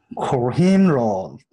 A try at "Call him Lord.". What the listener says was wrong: 오, 너무 오라고 하지 말고 어 비슷한 오.